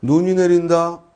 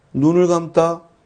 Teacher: 눈이 내린다 할 때 눈은 긴 소리고 눈을 감다의 눈은 짧은 소리다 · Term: 소리의 길이